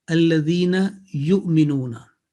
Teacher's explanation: On Waw, there is a Hamza on top, and over Hamza, there is a Sukun, meaning Sukun or Jazm. So light jerk will take place.